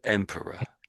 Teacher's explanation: The OR here really is a schwa